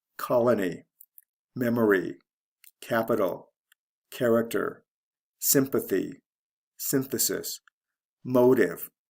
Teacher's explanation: Notice how in most of these words the first syllable is stressed.